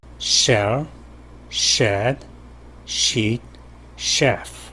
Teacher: SH 소리는 혀끝이 아니라 혓날과 잇몸의 뒷부분이 접근해서 나는 소리죠. 그래서 shell, shed, sheet, chef 이런 식으로 마찰이 좀 긴 구역에서 약간 뒤쪽에서 혀끝이 좀 더 뒤쪽에 와 있죠. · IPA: /ʃ/